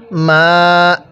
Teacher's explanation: শিখবো মিম সাররি এরপর মিম আলিফ জবর মা এক আলিফ টান জবরের পরে খালি আলিফ এক আলিফ টান দিতে হবে